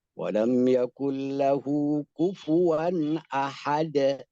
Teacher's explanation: bunyi pelafalan qalqalah secara mutlak dia adalah lebih banyak ke A, vokal A. Jangan dibaca rada taklil imalah.